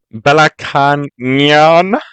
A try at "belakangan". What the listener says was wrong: Belakangan. You need to practice your NNGs.